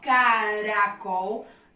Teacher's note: O R entre vogais tem um som mais fraquinho, ó, caracol, tem som fraquinho.